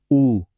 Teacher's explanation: इन आवाजों को बनाने में जीभ का कोई खास रोल नहीं है, सारा काम होठों का है। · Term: ओष्ठ